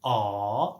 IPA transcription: ɑː